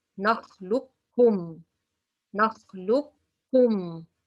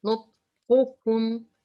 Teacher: I put shadda in the kaf and I pronounce two kaf. There is no qaf at all. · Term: complete idgham